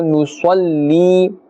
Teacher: Sad is part of the huruf musta'aliyah, therefore it must be pronounced with a full mouth.